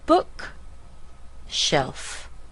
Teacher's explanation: stress the word book